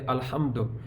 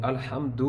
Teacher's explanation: دال کے اوپر پیش ہے تو اس کو لمبا نہیں کریں گے